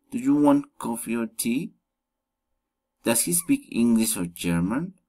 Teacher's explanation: Alternative questions, rising and falling intonation.